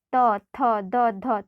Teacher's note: आपका जो जीभ है वो आपके दांत में टच होगा। तो ऐसे वर्णों को हम लोग दंत व्यंजन कहते हैं।